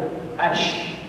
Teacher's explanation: Tempat keluar huruf syin adalah di tengah lidah.